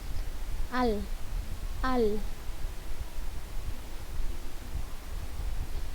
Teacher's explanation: Posisi lidah pada gusi dari gigi bagian atas. Posisi lidah menempel pada gusi tempat keluar gigi gitu. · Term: harful lam